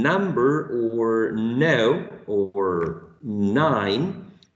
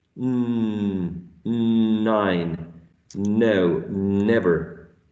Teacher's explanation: I think the tip of my tongue is touching this section, the alveolar ridge